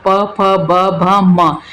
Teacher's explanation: तो इसमें आपके दोनों ओष्ठ का परस्पर जो है टच होता है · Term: स्पर्श व्यंजन